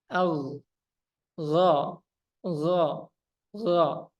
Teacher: huruf gain sifatnya jahar nafas tertahan Ya otomatis dia AG g g gho tapi suaranya dilepas a · istila artinya pangkal lidah yang naik · kalau untuk huruf Gin nah dia naik nih ujung belakangnya naik jadi pengucapannya ada suara o-nya tapi suara o-nya itu bukan karena kita majukan bibir